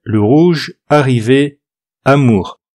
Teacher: Le R, c'est un re, un peu comme une jota espagnole ou KH dans certaines langues. C'est un re qui est adouci. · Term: R français